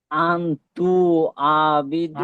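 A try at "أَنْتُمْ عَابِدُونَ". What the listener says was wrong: আন তু হবে না, তুম, তা মিম পেশ তুম। আবিদু। আ টান দেন, খাড়া যাবে এখানে টান দেন, আবিদু না।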